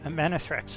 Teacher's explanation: I've just put the accent on the middle syllable on man